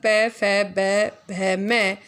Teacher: तो इन सब का उच्चारण स्थान क्या है? ओष्ठ है।